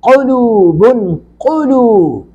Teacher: قوف کو پر کر کے پڑھیں گے